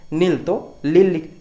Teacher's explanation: हैं कहो कहो न का उच्चारण ल भी ला ठीक है नागपुरी में कहीं-कहीं आपका न का उच्चारण क्या होता है ल भी होता है